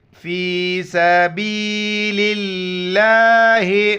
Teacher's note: لفظ اللہ سے پہلے لام پر زیر ہے، لفظ اللہ کو باریک کر کے پڑھیں گے. فا کو یا کے ساتھ ملائیں گے.